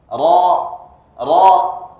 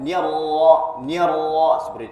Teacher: Huruf ra ini salah satu sifatnya itu ada yang namanya takrir, yakni bergetar. Jadi ketika kita mengucapkan huruf ra harus ada takrirnya.